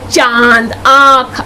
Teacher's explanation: इसका उच्चारण करते समय वायु नाक और मुंह दोनों से बाहर निकलती है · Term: अनुनासिक